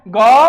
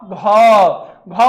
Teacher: घ बोलने में क्या हो रहा है ज्यादा हवा निकल रहा है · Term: महाप्राण